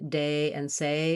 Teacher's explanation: Usually it's easier for people to say words that end with A, day and say, because we can naturally glide. There's more time to close. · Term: American diphthong A